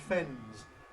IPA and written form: fenz (fens)